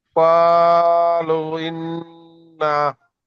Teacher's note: নুন তাজদিদকে একালি পরিমাণ গুণনা করে পড়তে হয়।